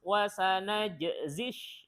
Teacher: di jimnya itu emang qalqalahnya harus pas